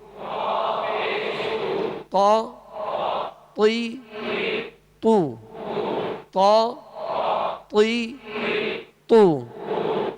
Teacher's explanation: اب تو کو پر پڑھنے، تو زبر تو، لیکن اس بات کا خیال رکھیے گا کہ زبر اور زیر میں تو کو ادا کرتے ہوئے ہونٹ گول نہ ہوں، اور جب اس پر پیش ہوگا تو ہونٹ گول ہوں گے